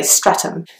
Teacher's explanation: it's not a th sound, it's just almost like a T sound